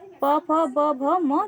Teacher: तो दोनों ओठों में प फ ब भ म